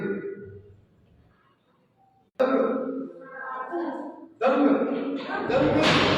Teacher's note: ਟਿੱਪੀ ਆਉਣੀ ਹ ਕਿਸੇ ਅੱਖਰ ਨੂੰ ਸ਼ਬਦ ਦੇ ਅਖੀਰਲੇ ਅੱਖਰ ਨੂੰ ਟਿੱਪੀ ਆਉਣੀ ਉਹ ਗਗੇ ਦੀ ਆਵਾਜ਼ ਕੱਢੇਗੀ ਪਰ ਗਗੇ ਦੀ ਆਵਾਜ਼ ਗਗੇ ਨੂੰ ਪੂਰਾ ਨਹੀਂ ਕਰਦਾ